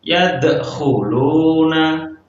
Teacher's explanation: ada huruf dal sukun di situ. Yadkhuluna. Kita pantulkan huruf dal tersebut